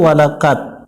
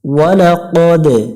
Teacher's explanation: দাল অক্ষরের উপরে সুকুন থাকলে একটু প্রতিধ্বনি সৃষ্টি করে নিব, যেটাকে কলকলা বলে